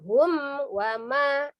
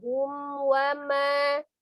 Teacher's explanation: Itu kan izhar ya, izhar safawi. Itu ngalir ya, nggak boleh diputusin, nggak boleh dibanting.